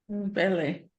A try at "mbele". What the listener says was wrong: Yeah, you're always doing an M as a separate, but you need to pronounce it as mba, mbe, mba. Mbe, so it becomes mbele.